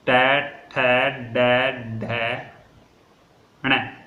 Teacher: जो दांतों के ऊपर बना होता है ना कठोर सी परत, मूर्धन्य को। जैसे बोलकर देखिए आप ट ठ ड ढ अण, तो हमारी जीवा मूर्धन्य को स्पर्श कर रही है